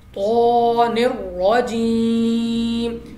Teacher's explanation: یا ساکن سے پہلے زیر ہے یا مدہ ہم نے کھینچ کر پڑھنا ہے